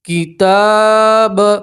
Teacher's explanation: کھڑا زبر میں بھی کھینچ کر پڑھتے ہیں ایک الف کے برابر